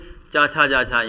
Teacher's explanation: च वर्ग का उच्चारण तालव्य से होता है